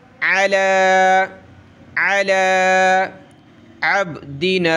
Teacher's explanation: نزلنا ریب مما نزلنا، نزلنا علی، عین زبر ع، لام کھڑا زبر لا، یا کو نہیں پڑھیں گے، عین کو گلے سے نکالیں